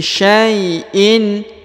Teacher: huruf Sya diayun sekali dengan lembut karena di depannya terdapat Ya Sukun